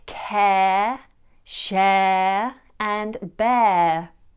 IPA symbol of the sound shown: eə